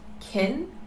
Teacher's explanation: in positive sentences it is pronounced kin and is unstressed